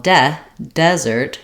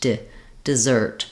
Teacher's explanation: in the first syllable is going to be the I sound it's a reduced vowel because it's not stressed so here have the clear vowel de desert here it's reduced